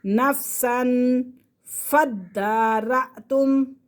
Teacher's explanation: وَإِذْ قَتَلْتُمْ نَفْسًا فَادَّارَأْتُمْ، نفساً تنوین کے فوراً بعد فا ہے، فا حروف اخفا میں سے ہے تو یہاں پہ ہم غنہ کر سکتے ہیں